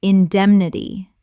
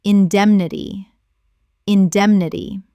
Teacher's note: Four syllables with the stress on the second.